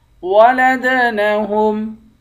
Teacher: دال پر قلقلہ کریں گے، آخر میں میم ساکن ہے۔